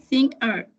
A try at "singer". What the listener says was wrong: Singer, poquito más pegada a las dos, pero súper bien. Singer, singer, singer.